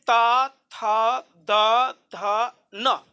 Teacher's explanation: तथा जब आप पढ़े हैं तो आपका जीभ ऊपर का दांत में सटा है